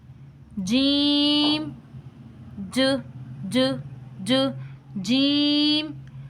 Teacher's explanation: جب ہم جیم کو پڑھنے والے ہوتے ہیں نا تو ہماری زبان کا درمیان والا حصہ اوپر کے تالوں کے ساتھ جڑ جاتا ہے